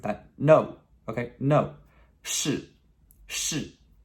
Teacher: That's S-H-I with a fourth tone, okay? That really sharp descending tone,